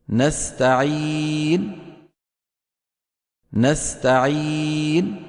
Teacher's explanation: عدم إعطائها حقها من الغنة عند الوقف عليها